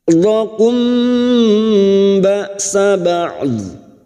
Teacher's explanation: mim sukun bertemu ba ikfa safawi, ikfa safawi, mim sukun mendengung selama 3 harokat.